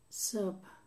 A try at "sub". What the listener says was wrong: You're saying sup. Which is to drink. Sub.